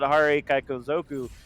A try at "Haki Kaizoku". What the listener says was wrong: Where did you get the R? There's no R. There's no R.